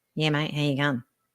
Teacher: everything sounds like really nasal and we don't open our mouth at all